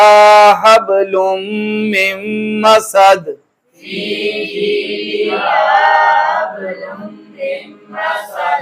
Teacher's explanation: ادغام بھی ہو رہا ہے اور ساتھ غنہ بھی ہو رہا ہے. لام اور را آ جائے تو ادغام بغیر الغنہ، باقی چار آ جائیں تو ادغام مال غنہ.